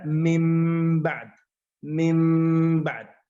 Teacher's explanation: من بعد، هكذا بغنة مقدار حركتين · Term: الإقلاب